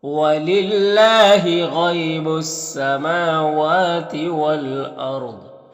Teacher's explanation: را کو پر پڑھیں گے، ضاد کو بھی پر پڑھیں گے ، تو اس طرح سے پڑھیں گے۔ وَلِلَّهِ غَيْبُ السَّمَاوَاتِ وَالْأَرْضِ۔ · یہاں پر الف لام حروف قمری حمزہ کے شروع میں ہے، اور را کو پر پڑھیں گے، ضاد کو بھی پر پڑھیں گے